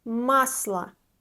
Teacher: Unstressed O is A.